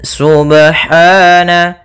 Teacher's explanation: laa ya'lamun pada bacaan Subhana ada pada lafal huru ba sukun Apabila ada huruf ba dia harakatnya sukun maka ada hukum Qalqalah maka harus dipantulkan dalam membacanya